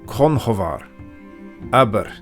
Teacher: Slender R's were generally tapped, so conhovar, aber.